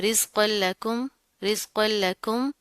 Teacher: حروف یرملون میں سے لام آ رہا ہے، اوپر تشدید بھی ہے، تو مضبوطی سے جما کر پڑھیں گے اس کو، اور اس کو ہم اس کے ساتھ ملا دیں گے، ٹھیک ہے؟